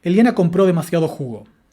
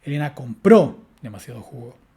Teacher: el acento nuclear está cayendo sobre el último acento de nuestra oración, que en este caso corresponde a la sílaba ju.